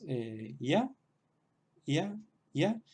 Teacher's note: tenemos que tener cuidado de pronunciar una consonante un poco más suave de lo que pronunciamos la Y en español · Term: semivocal